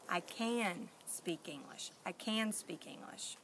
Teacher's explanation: for can is it's much longer sounding. It's not cut off. It's smooth.